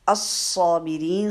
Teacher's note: الصابرین، صاد مشدد ہے، مشدد میں جو پہلا صاد آپ ادا کریں گے ساکن، اس کو اچھا سا ٹائم دینا ہے، موٹا بھی کرنا ہے آواز کو، اور اس کو شارپ آواز کے ساتھ، یعنی اس میں صفیر کی جو صفت ہے وہ لازمی لانی ہے